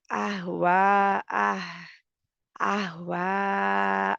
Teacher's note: इसमें हा जो है आसानी से ये सीने की तरफ वाली हा है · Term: रखावा